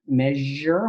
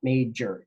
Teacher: measure with a zh in it. That's a fricative, right? Measure versus major, j. That is an affricate